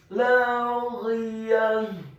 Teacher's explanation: Kemudian kata laghiyah, huruf lam alifnya dibaca tipis, fathah 2 harokat. Huruf ghainnya dibaca tafkhim tebal dengan posisi bibir bawah kita agak tertutup dan kemudian ditarik secara tipis.